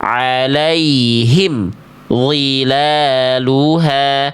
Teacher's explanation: Bunyi em dengan d enggak boleh ada jedah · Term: izhar syafawi